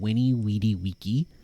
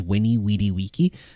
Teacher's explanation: actually the V is meant to be a W sound